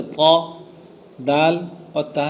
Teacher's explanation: پھر جب دال ادا کریں گے تو تھوڑا نیچے میں لگے گی، اور تا ادا کریں گے تو اور نیچے میں لگے گی.